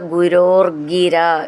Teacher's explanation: ഗ എന്നുള്ളത് ഡബിൾ ആയിട്ട് പറയണം ചേർത്ത് ചൊല്ലുമ്പോൾ